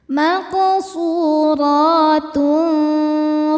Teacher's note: Dibacanya tanwinnya samar-samar ke fa disertai dengung ya, samar dan dengungannya dengungannya sama besar. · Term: ikhfa haqiqi ausath